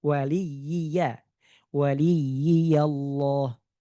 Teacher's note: dia ada dua huruf yang sama berharakat tidak dileburkan, tidak dimasukkan ke huruf yang kedua.